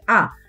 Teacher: আ কিন্তু নিম্ন স্বরধ্বনি জিভের উচ্চতা অনুযায়ী